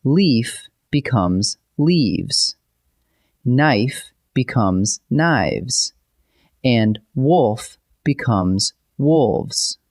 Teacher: Say them out loud, and you can actually hear the soft V sound take over.